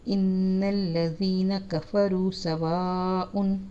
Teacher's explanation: یہ سواء پہ جو ہے نا یہ درمیانی مد پڑی ہوئی ہے، اس کو بھی تھوڑا سا کھینچنا ہے